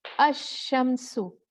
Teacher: अशम्सु इसका मतलब है this letter शीन is twice there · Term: तशदीद